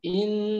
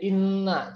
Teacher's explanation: nun bertasydid, mim bertasydid, itu kan huruf hidung itu kan gunnah, maka dia ke hidung